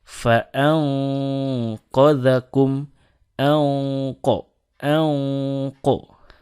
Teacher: ketika bertemu dengan qaf, fa-anqadakum, anqo, anqo, itu menjadi lebih kental. Artinya, ingatlah bahwa ikhfa beresonansi di dalam mulut.